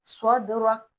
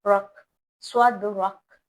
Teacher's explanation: جب ہم کاف پر رکیں اور کاف پر جزم آ جائے وقف لینے کی صورت میں تو وہاں پر ہم ہلکا سے جھٹکا دیں گے